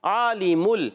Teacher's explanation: عین کا مخرج حلق کے درمیان والا حصہ، عین پر کھڑا زبر ہے، ایک الف کھینچنا ہے۔ عالم لام کے نیچے زیر، میم پر پیش، حرکات نہیں کھینچیں گے، لام ساکن ہے، اس کو ہلائیں گے نہیں۔